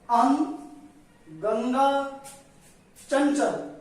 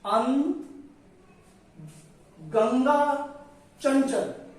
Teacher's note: तो इनके उच्चारण करते समय जो ध्वनि है वो नाक से निकलती है। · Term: अनुस्वार